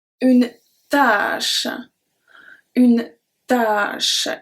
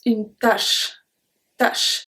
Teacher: une tâche with the accent circonflexe, we pronounce it longer